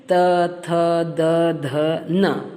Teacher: दांत को छूती है हमारी जबान इन अक्षरों के लिए। ऊपर के दांतों पर जीभ लगाने से जिनका उच्चारण होता है वे हैं त, थ, द, ध और न, ल और स। · ये अक्षर ऐसे हैं जिनका उच्चारण करते समय हमारी जो जीभ है, जिबान है, जिह्वा है, वो दांतों को छूती है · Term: दंत्य